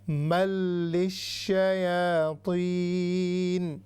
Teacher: لام ادغام بلا غنہ، یعنی یہاں پر غنہ نہیں ہوگا، لیکن ہم نے میم کو لام کے ساتھ پھر لام کو شین کے ساتھ ملا کر دونوں کو جو ہے شدہ کے ساتھ انفسائز کر کے تھوڑی سی اس کو جو ہے سختی کے ساتھ ہم ادا کریں گے۔